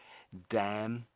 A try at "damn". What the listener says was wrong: So the N is silent really. Damn. Damn. Damn.